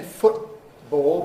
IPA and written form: ˈfʊtbɔːɫ (football)